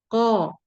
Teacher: Kemudian di sini hurufnya tebal. Ko dari segi suara dan udara, yaitu jahar dan siddah, tertahan udara dan tertahan suara. Jadi ko, kemudian pangkal lidah naik, isti'la karena huruf tebal.